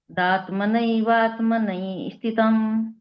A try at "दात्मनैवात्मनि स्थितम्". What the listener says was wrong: इसको जोड़ के बोलेंगे ना, स्थितम में ई अलग से नहीं बोलना पड़ेगा आपको। दात्मनैवात्मनि स्थितम्।